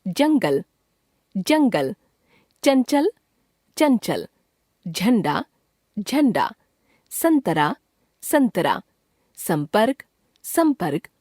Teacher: अं को अनुस्वार कहते हैं जिसका उच्चारण नाक से होता है। इसका प्रयोग पंचम वर्ण ङ ञ ण न म के स्थान पर किया जाता है।